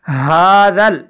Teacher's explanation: یہ ہا جو ہے یہ سینے سے اس کی آواز آئے گی